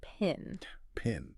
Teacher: did you notice that little puff of air that came out when you said the P at the beginning I think so yeah that's called aspiration and we actually represent